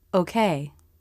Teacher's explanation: lips begin to round for the transition into the ending position the lips round but not quite as much as for the stressed o in slow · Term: unstressed version